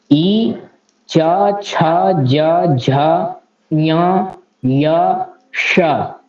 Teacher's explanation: तो तालु से उच्चारण होता है ई का और चवर्गों का, यकार का और तालव्य श का।